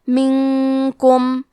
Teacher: کلمت منکم میں نون ساکن ہے، پھر حرف الکاف ہے، کاف حروف الاخفاء میں سے ہے، تو ہم یہ حکم کو غنہ کے ساتھ ادا کریں گے۔